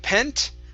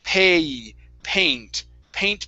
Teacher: instead of pent with a short e it's going to be a long a sound